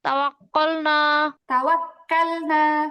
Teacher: তাওয়াক্কালনা কাফ হবে, কফের মতো মোটা হবে না।